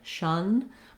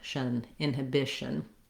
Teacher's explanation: I may have a small vowel schwa there, shun, but I want to go as quickly as I can from the SH to the N sound, shun, inhibition. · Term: syllabic N